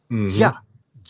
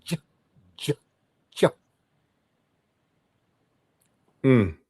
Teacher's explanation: every time you make the sound J, you gotta make the sound D, ja, ja. Yeah.